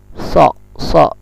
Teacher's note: so ini makhrajnya lidah ikut dengan gigi bawah, lidah ini nempel dengan gigi bawah